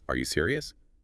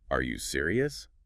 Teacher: add that little upward flick at the end.